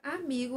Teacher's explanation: A palavra amigo, a sílaba tônica é o mi, então a sílaba tônica é a penúltima